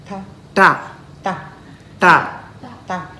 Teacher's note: Our tongue curls back and then tap on the upper palate. Ta. Okay, so it taps on the upper palate.